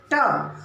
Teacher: ट वर्ण में हम देखेंगे यह मूर्धा को टच करता है।